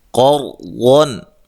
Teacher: قاف کو موٹا، را ساکن سے پہلے زبر ہو، را کو بھی موٹا ادا کرتے ہیں ، واد کو بھی موٹا ادا کرنا ہے، اور یہاں نون